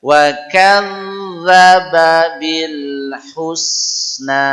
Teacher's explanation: zal juga huruf ujung lidah, tempelkan ujung lidah ke gigi seri atas, gigi atas yang dua di tengah getarkan